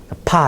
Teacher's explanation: 그 다음에 피읍은 공기를 더 많이 내뱉으면은 이제 비읍에서 공기를 더 많이 내뱉으면 피읍이라는 소리가 나요. 파 이런 식으로 공기가 더 많이 튀어나오는 거. · 파 이런 식으로 공기가 더 많이 튀어나온 거 거센 소리